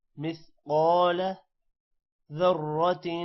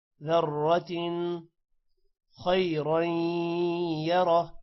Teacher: را موٹا ہوگا اور تن پر غنہ نہیں ہوگا کیونکہ آگے حروف حلقی آ رہا ہے